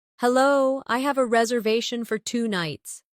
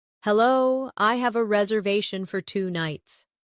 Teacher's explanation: notice the stress on reservation. It helps make your meaning clear.